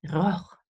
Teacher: some people also have a uvular R